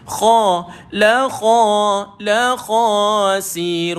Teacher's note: Huruf kha, huruf dia tuan-tuan duduk dekat hujung kerongkong, dekat dengan anak tekak kat situ. Macam kita sedang nak mengeluarkan bunyi kumur tuan-tuan.